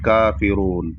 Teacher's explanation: کافرون پر کھڑا زبر ہے تو اس کو 1 الف کے برابر کھینچیں گے، کافرون، بس اتنا ہی۔